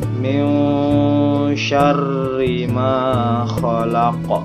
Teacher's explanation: Pada ayat kedua kita bisa perhatikan di sini ada hukum bacaan atau hukum tajwid ikhfa, di mana nun mati bertemu dengan huruf shin dan dibacanya itu dengung atau samar-samar. Setelah itu ada tanda tasydid di atas huruf ra.